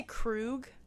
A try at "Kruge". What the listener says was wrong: I think it's pronounced like Kruge. Like you have to kind of put the e at the end, but like it's very subtle.